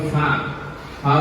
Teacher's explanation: ফা উচ্চারণ হয় 2 ঠোঁটের নিচের অংশ আর দাঁত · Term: হামসের হরফ